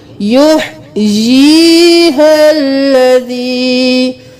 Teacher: اس یا مدہ کو یا کے ساتھ ملائیں گے، یا زیر یا یی، ایک الف کے برابر کھینچیں گے